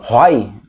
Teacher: Tá no O, desceu pro I, de tom decrescente. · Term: ditongo decrescente